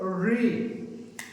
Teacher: अगर हम री बोलते हैं तो हमारी जिह्वा जो है वो मुड़ती है और ऊपर वाले भाग को छूती है, री। ये शुद्ध उच्चारण है।